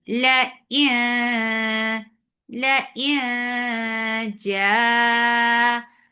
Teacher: You're hiding the sound of noon. You're going to the makhraj of jim, and you are keeping the sound in your nose. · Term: ikhfa